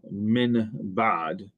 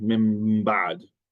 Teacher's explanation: if you have an N sound before a B, then because the place of articulation for the B is bilabial, it will change into an M sound